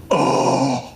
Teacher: Breathy voice, long, low back, unrounded vowel with advanced tongue root.